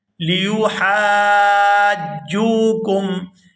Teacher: یہاں ہا کو کھینچتے ہوئے جیم مشدد کے ساتھ ملائیں گے اور پھر جیم کو واو مدہ کی وجہ سے کھینچ کر ادا کریں گے